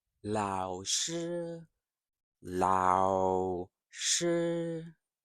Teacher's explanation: So actually, both tones are steady. So the third tone is steady but low. The first tone is steady but higher. So as long as you have the difference, you will be fine.